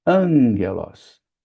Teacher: na pronúncia, o primeiro gama se torna um gama nasal. Então a gente não dizelos, a gente diz anguelos.